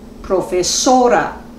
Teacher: tenemos una palabra llana y el acento prosódico recae sobre la penúltima sílaba